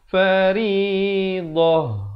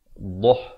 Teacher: huruf dad makhrajnya di tepi lidah, bawakan ke kanan atau ke kiri ya, mengikut keselesaan sahabat-sahabat.